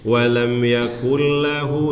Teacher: idgham bilagunnah ya dia masuk tapi tanpa dengung